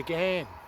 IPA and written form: ɡæn (Ghan)